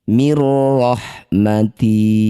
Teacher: Nun sukun bertemu ro disebut bacaan namanya idgham bila gunnah. Masukkan bunyi nun pada ro bila gunnah tanpa mengalirkan suara melalui rongga hidung atau tanpa didengungkan